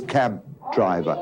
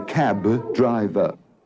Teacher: the B at the end of cab is no longer released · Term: stop